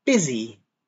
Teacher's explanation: the S is pronounced like a Z. So it's B-Z.